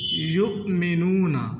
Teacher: یؤمنون، یہ یا کے آگے جو آپ کو وہ نظر آ رہا ہے، یہ وہ نہیں ہے، وہ کے اوپر حمزہ ہے تو حمزہ ساکن ہے، تو حمزہ ساکن کو جھٹکے سے پڑھا جاتا ہے۔ یؤمنون، بعض غلطی کر جاتے ہیں، وہ پڑھتے ہیں یؤمنون، وہ پڑھ جاتے ہیں، وہ نہیں ہے بلکہ یہ حمزہ ہی ہے۔